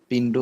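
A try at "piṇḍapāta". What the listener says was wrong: আমাদের ওখানে বলে যে পিন্দু পাতা, পিন্দু পাতা, আসলে এটা পিন্দু পাতা না, পিন্দা পাতা। ওখানে বলে যে পিন্দুপাত, পিন্দুপাত, আসলে পিন্দুপাত না, পিন্দা পাতা আছে, পিন্দু পাতা নাই।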